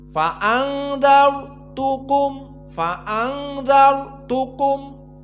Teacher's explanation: Darajat yang pertama dari sukun yang sebelumnya fathah maka di sini rnya tebal faanzartukum faanzartukum maka ro dalam keadaan dibaca dengan mufakhamah faanzar tukum